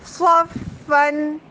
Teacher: اس کو موٹا کرنے کے لیے زبان کا آخری حصہ اٹھاتے ہیں اور صاد میں سیٹی بہت پرومیننٹ ہوتی ہے، صاد کی سیٹی ڈراپ نہ ہو.